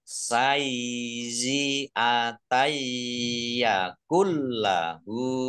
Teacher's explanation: Fathah tanwin bertemu dengan huruf ya, itu bi gunnah masuk dengan mendengung, yaitu mendengung ya, ditahan biar tampak mendengung.